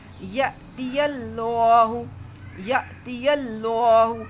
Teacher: یہ جو الف کے اوپر جزم ہے یہ الف حمزہ ہوتا ہے، جزم والا الف، اس کو کیسے پڑھنا ہے؟ جھٹکے سے